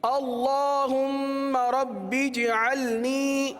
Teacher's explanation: جیم پر قلقلہ ہوگا، جیم ساکن ہے، جیم پر قلقلہ کریں گے